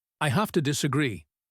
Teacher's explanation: In fast speech, have to becomes hafta.